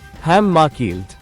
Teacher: The dagesh, the small dot of emphasis in the letter mem of hamaakheleth, functions as a doubling of the sound.